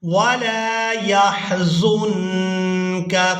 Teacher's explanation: وَلَا يَحْزُنْكَ، زا کو ادا کرتے ہوئے سیدھی کی مثل آواز پیدا ہوگی، اور زا کو جب ہم نے نون ساکن کے ساتھ ملانا ہے تو یہاں نون ساکن کو اخفا کے ساتھ ادا کرنا ہے، یعنی نون ساکن کو ناک میں چھپا کر ادا کریں گے